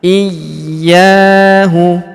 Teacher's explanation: Huruf ya kita tahan dan tekan karena terdapat tanda tasdid di atasnya